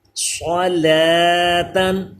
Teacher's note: صاد کو پر کیجئے. حروف مستعلیہ ہے. لام بھی باریک اور تا بھی باریک. جب ہجے کریں گے تو اس کو لام کھڑا زبر لا پڑھیں گے.